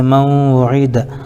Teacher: من وعید میں نون ساکن کے بعد حروف یومن میں سے واو آ رہا ہے اس لیے ادغام یرملون مع الغنہ ہوگا, اس کو ادغام ناقص بھی کہتے ہیں.